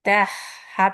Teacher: تہ ہا پہ سکون آ گیا تو اور زیادہ ہمس واضح ہو رہا ہے. رخاوت کی وجہ سے ہمس یعنی کہ ایئر زیادہ واضح ہو جا رہی ہے.